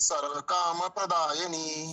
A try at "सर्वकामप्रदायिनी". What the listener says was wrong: सर्व काम प्रदायिनी, जहाँ पे प्र होता है उसको दो ऐसा लगना चाहिए कि डबल प्र का उच्चारण हो रहा है। काम प्रदायिनी।